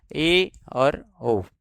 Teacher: उच्चारण के समय जब जिभ्या की ऊंचाई संवृत की तुलना में कम रहती है। ऊपर और नीचे के दांत थोड़े दूर रहते हैं। खुलते हैं अर्थात आधे ही बंद रहते हैं। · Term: अर्ध संवृत